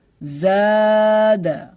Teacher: میں نے زا کو ایک الف کے برابر کھینچ کے پڑھا ہے کیونکہ اس میں الف مدہ ہے. آپ دیکھ سکتے ہیں الف سے پہلے زبر ہے تو اس میں الف مدہ کا قاعدہ ہو گیا, اس لیے میں نے اس کو ایک الف کی مقدار کھینچ کے پڑھا.